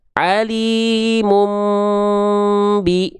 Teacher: Bunyi mim kan bunyi dengung, pasti masuk hidung nih. Alimum tuh masuk hidung.